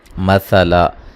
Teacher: وقف جب کریں گے الف مدہ میں تبدیل کر دیں گے